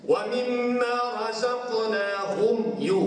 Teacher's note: kita baca dengan izhar tanpa ada dengung. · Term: izhar syafawi